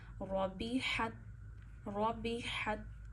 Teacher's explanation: हा गले के दरमियान से अदा करिए।